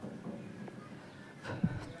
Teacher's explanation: च बोलेंगे तो च का उच्चारण स्थान तालु से होते हैं।